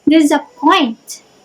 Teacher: Next is anapest or anapistic. It has 2 unstressed and followed by stress.